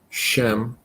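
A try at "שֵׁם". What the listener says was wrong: Shame with sere, isn't it? Shame.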